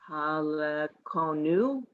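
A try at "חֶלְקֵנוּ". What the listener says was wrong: No. Not ha. 3 dots.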